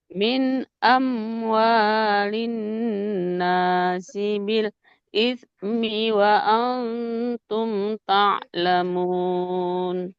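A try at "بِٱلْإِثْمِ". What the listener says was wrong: Nah, dia hati-hati kita nggak boleh menjedah, nggak boleh bil ismi, nggak boleh ada jedanya ya. bil ismi. Jadi bunyi huruf satu dengan huruf lainnya itu menyambung. Tidak bil ismi.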